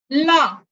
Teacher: पार्श्विक, ला आपके जिह्वा का जो ऊपरी भाग है वह ऊपर छूता है और वायु दोनों तरफ से निकलती है, इसीलिए पार्श्विक।